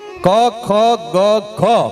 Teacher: પણ પાછા પ્રકાર છે ક ખ ગ ખ આને કંઠવ્યયો કહેવાય આ અક્ષર બોલો એટલે કંઠ એટલે એટલે ગળામાંથી અવાજ નીકળે